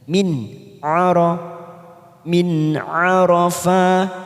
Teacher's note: Tum min, berikutnya ada nun sukun bertemu ain, kita baca jelas tanpa mendengung, namanya bacaan idhar halki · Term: idhar halqi